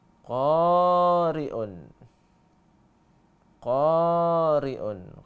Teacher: Qafnya panjang, roknya pendek.